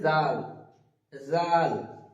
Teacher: জিভের আগা সামনের দাঁতের সঙ্গে লাগিয়ে উচ্চারিত হবে